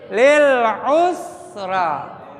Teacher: Sinnya adalah hams, harus ada hembusan angin